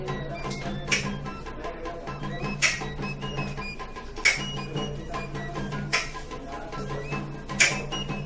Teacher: Continuamos con la K glotalizada y su modo de articulación. Esta grafía, su sonido fonológico es velar.